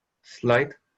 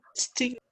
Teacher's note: they began the words with S sound, not with an E sound